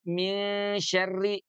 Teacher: nun yang asalnya ada di ujung lidah itu bergerak ke tengah lidah, karena huruf shin keluarnya di tengah lidah ya. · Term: ikhfa